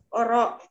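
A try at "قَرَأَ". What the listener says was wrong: Koro. Koro. Mohon ini ya, mohon tidak dibaca wakof ya. Maksud saya tidak dibaca wakof itu. Kalau hurufnya berbaris dhammah ya dibaca U. Kalau berbaris kasroh dibaca I. Kalau berbaris fathah ya dibaca A. Walaupun dia ada di akhir kata. Karena kita sekarang posisinya tidak sedang membaca Al-Quran.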